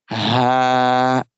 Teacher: Ha with vertical fatha, we make it longer for 2 seconds. Ha, this ha from the bottom part of the throat.